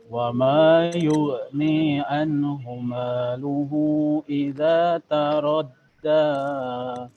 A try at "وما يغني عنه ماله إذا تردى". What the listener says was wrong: Hu-nya kurang panjang. Wa ma yughni anhu maluhu idza taradda. Panjangnya 2 da-nya ya.